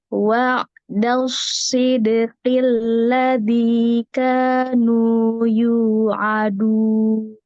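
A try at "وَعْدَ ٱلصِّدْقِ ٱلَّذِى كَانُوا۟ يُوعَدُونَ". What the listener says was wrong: dari dal itu shotnya bagus tebel, tapi pas baca si-nya malah jadi tipis. Jadi gini, dibacanya gini. Wa'dal sid. Nah, padahal pas pas masuk ini udah bagus, itu shot. Nyampe baca sid itu jadi sid. Nah, jadi tipis. Kan entah mau siap-siap ke dal atau gimana, tapi shotnya berubah jadi sin.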